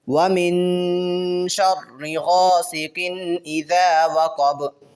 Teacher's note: ومن پہ یہاں پہ بھی نون ساکن ہے، اس پہ غنہ کریں گے، اور آگے جو با ہے، با کو ہم نے وقف میں ساکن کیا تو با پہ ہم قلقلہ کریں گے